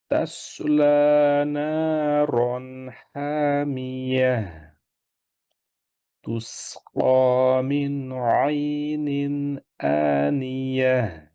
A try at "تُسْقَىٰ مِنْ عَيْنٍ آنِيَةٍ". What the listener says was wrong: একটু এখানে খেয়াল করেন যেন সিন পড়ার সময় যেন ঠোঁটটা গোল না থাকে তুস না না হয় তুস তা পড়ার সময় ঠোঁট গোল হবে সিন পড়ার সময় হাসবেন তুস তুস ক তুস ক